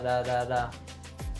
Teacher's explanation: It's actually the same sound that we have with the R in Spanish or some other Latin languages. The American T is voiced, meaning that if you touch your throat, you would actually feel it vibrating as you're making the sound.